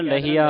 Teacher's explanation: ਇਹਨੂੰ ਲਈਆ ਨਹੀਂ ਕਹਿ ਦੇਣਾ ਲਹੀਆ ਹਾਹ ਬੋਲਣਾ ਵਿੱਚ